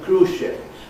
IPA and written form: ˋkruːʒʃɪp (cruise-ship)